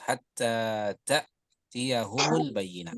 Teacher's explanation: Ta ada penekanan ya. Nafasnya juga agak mau terputus. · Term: Hamzah sukun